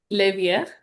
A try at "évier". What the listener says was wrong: Donc, ici, rappelez-vous, c'est pas évière, c'est évier. Évier, oui, comme immobilier, évier, donner, ramener, mener. Donc, pas le R, on dit pas le R.